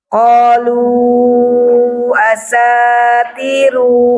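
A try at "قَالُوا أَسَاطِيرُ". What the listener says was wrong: Ibu kepanjangan Kepanjangan. Itu mat tafkir kayaknya Bu ya. Mat tafkir. Qalu asatiru.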